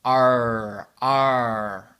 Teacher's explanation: Vous n'allez pas sentir dans la gorge, vous allez le sentir à l'avant. R, R. Et je peux bouger la bouche comme je veux. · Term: le son R